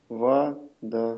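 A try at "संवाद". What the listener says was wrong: А можно не членораздельно, а все же слитно?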